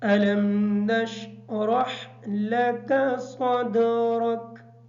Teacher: نشرح کی جو را ہے اس را کو پر پڑھیں گے، اس وجہ سے کہ اس کے اوپر زبر ہے، اور ہا کو کلیئر کریں گے۔